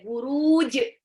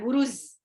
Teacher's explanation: Jim ada pantul ya, buruj. Bukan buruz, bukan Z.